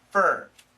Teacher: perfect pronunciation, for, but many Americans, we shorten it to fur